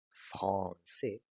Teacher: En francés, la letra R no se pronuncia con el alvéolo como en español, sino que se pronuncia con la úvula. Por ejemplo, français, en esa palabra hay una vibración de la úvula y esa vibración produce el sonido uvular y la R característica del francés. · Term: sonidos uvulares